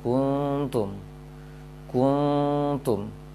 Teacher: Dari ku sudah monyong, ketika dengung tidak berubah, tetap monyong juga. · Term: Bibirnya monyong sempurna